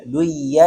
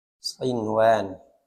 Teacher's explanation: tidak boleh nun sukun ketika bertemu dengan ya, tidak boleh diidghamkan, harus izhar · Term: izhar mutlaq